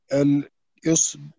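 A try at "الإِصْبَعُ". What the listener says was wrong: Genau.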